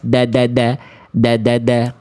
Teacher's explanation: Kalau huruf dal kan di ujung lidah ke pangkal gigi atas.